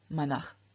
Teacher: In nominative, vocative, accusative, we have no ending added, and through external sandhi, the S at the end of manas changes into visarga